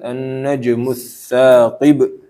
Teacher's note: annajmu di sini qalqalah ya harus ada pantulan